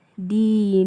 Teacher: karena huruf sebelum nama Allah berharakat kasrah, maka dibaca tipis.